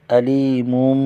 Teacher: علی پر یا مدہ ہے، ایک الف کھینچے گے